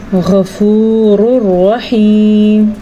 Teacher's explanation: ایک لفظ ہو گیا مر ربک کا نون ساکن کے بعد را آنے کی وجہ سے، اور دوسرا لفظ ہے غفور الرحیم، تنوین کے بعد را آنے کی وجہ سے یہاں پہ نون کی حیثیت ختم ہو جائے گی، یعنی کہ نون تنوین کی حیثیت ختم ہو جائے گی۔